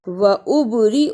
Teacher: البا جزم کی صورت میں حرف قلقلہ ہے، یعنی اس کو ہلا کر پڑھنا ہے